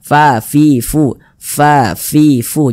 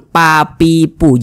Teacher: Fa Ini adalah salah satu huruf yang memiliki sifat Hamas jadi kalau kita mengucapkan huruf Fa itu ada nafas yang mengalir ketika Kita mengucapkannya